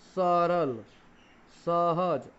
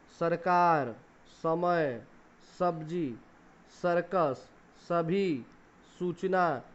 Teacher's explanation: इसमें जीवा हमारी दांतों के निचले मूल भाग को स्पर्श करती है। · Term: डंटी स